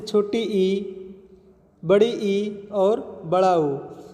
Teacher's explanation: समृद्ध स्वर, जिनके बोलने पर मुख की आकृति कम खुलती है